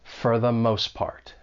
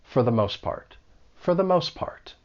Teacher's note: four when unstressed it may sound a little more like fur